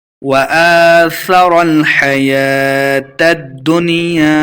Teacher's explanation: حمزہ کے اوپر کھڑی زبر ہے، اس کو 2 حرکات لمبا کرنا ہے